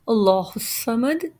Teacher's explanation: In Allahu Samad, Lam is a Shubha Mustali letter which we read already, means a temporary heavy letter, and here it will be read Mufakham because it is Fatha over it. Mufakham means heavy. · Swad is a Mustaliya letter, means a heavy letter, permanent heavy letter, which is always read heavy. And here again the verse completes, and when the verse completes at dal, we will drop the haraka dumma and we will do waqf bil askan.